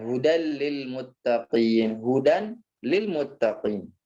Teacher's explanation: suara nun sukun atau tanwin ya sempurna masuknya ke huruf lam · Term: idgham bi ghairi gunnah